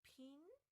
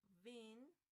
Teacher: we have pin with the vocal fold don't vibrate, or vin, the vocal fold vibrate